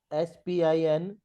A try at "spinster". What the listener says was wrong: Okay. A very minute mistake. It is STER. Spinster